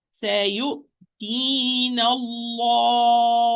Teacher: The lam is heavy because it's preceded by fatha.